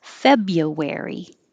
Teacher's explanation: we don't say the first r